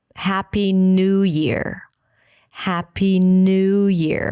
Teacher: here the stress falls on new, even though if you were to say, oh, it's a new year, you would put the emphasis on year. But when it's a set phrase, you put it together, New Year.